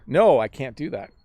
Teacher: The problem is we say can't so quickly, like I overpronounced it there, that it's hard to hear the T.